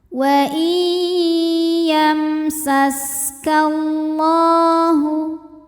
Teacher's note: lam jalalah di dibunyikan secara tafkhim karena harakat huruf sebelumnya fathah cara bacanya dibunyikan dengan tebal dengan cara mengangkat pangkal lidah kita